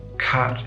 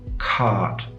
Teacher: the vowels in cat, right? That's the low front vowel, and cart, that's the low back vowel. The low back vowel is longer in duration.